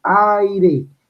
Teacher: Entonces yo pronuncio aire, la A es abierta y la I es cerrada. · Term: vocal abierta más cerrada